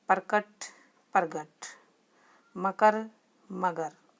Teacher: अघोष वर्ण के स्थान पर घोष वर्ण का उच्चारण करना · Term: घोषित करण